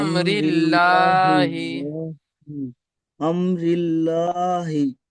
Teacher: আল্লাহ শব্দকে খাড়া জের এসেছে, তাই আল্লাহর নামকে বারিক করে পড়তে হয়।